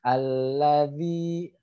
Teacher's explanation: ujung lidah bertemu ujung gigi seri atas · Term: huruf Zal